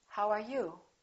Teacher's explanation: wh questions have falling intonation